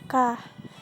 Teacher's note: Makhraj huruf kaf terletak pada bagian lidah paling dalam langit-langit mulut yang berdaging dan bertulang. Adapun cara mengucapkan seperti huruf K disertai keluarnya nafas seperti K.